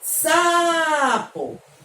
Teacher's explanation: Eu demorei mais na sílaba sa. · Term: sílaba tônica